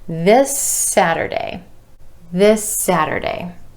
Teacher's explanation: That final S sound at the end of this is continuing on into the word Saturday.